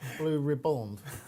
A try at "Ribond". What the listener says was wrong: You're saying it like ribbons. Like, Ribond.